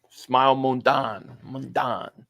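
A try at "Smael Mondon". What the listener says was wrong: Yeah, they say it's Smile, but it's like SMAEL.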